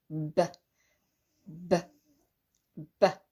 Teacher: You can see the tissue moving a bit. B, because I'm holding the air back behind my lips, which are quite tight, forcing it out. B, b. Okay, so that's the slight difference because the air is being held back, and I'm also the air's got to travel through these vocal cords, which are trying to vibrate to make the sound. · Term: B sound